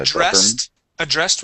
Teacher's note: addressed with the stress at the end